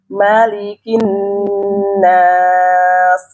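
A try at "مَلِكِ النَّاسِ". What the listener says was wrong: Wanas, jangan tebal. Malikin nas, tipis na, sanes na.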